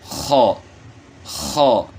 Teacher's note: جو گلے کے شروع سے خرخراہٹ کی آواز جو نکلتی ہے، تو یہیں سے نقطے والی خا جو ہے نا یہاں سے ادا ہوگی، لیکن اس کو موٹا کرنا ہے، اور اس کا یہ مطلب نہیں کہ آپ خرخراہٹ پیدا کریں، مطلب یہ ہے کہ وہاں سے اس کو ادا کرنا ہے، خا خا۔